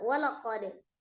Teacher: Walaqad, di situ ada dal sukun ya. Dal sukun sifatnya qalqalah ya, jadi dipantulkan.